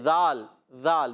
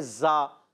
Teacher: تو ہم نے ذال پڑھنا ہے، زا نہیں پڑھنا۔ اچھا، ذال کا مخرج زبان کا سرا، اوپر کے دانتوں کے اندرونی کنارے